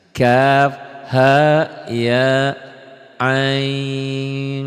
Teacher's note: ada bindeng, ada samar karena nun mati ketemu sad